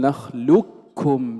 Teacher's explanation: الإدغام الكامل، أي ننطق بكاف مشددة. وكل هذا قد مر معنا أن نقول نخلكم لكم فلا يبقى أثر للقاف.